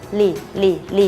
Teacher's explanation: ให้เหยียดริมฝีปากพร้อมทั้งกระดกปลายลิ้นแตะบริเวณฐานฟันบน